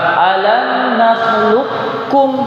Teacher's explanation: Kemudian juga di lafaz ini huruf qaf bertemu dengan huruf kaf. Yang mana qaf sukun kemudian kaf berharokat, maka qaf diidghamkan ke huruf kaf. Alam nakhluqukum Bukan alam nakhluqakum, tapi alam nakhluqkum.